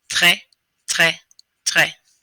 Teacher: The R comes from the back of the throat, but this time instead of having it be by itself, it's going to mix with the letter T.